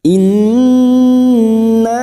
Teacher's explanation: Nun yang bertasdid gunnah musaddadah kita dengungkan selama 3 harokat.